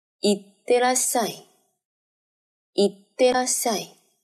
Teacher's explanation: 因为口语里边て后面的い经常省略，所以叫做行ってらっしゃい